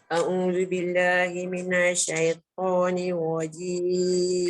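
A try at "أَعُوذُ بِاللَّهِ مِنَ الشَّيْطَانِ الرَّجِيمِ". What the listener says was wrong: A'udzu billahi minash jangan minash. Dia jangan lambat sebab dia ada sabdu kat situ kan.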